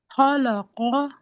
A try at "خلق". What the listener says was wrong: अब लॉ भी कर दिया, लॉ नहीं करना, ल खौलक। ये बहुत रिपीट होता है कुरान मजीद में वर्ड, तो इसका बहुत प्रैक्टिस करनी है। हाँ, खौलक। हाँ, खुलिक।